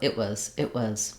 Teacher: And notice how when I say it was, I don't say it was. The T on it gets unreleased and the was is quick. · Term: reduced was